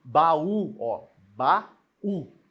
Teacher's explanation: O A fica separado do U. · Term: hiato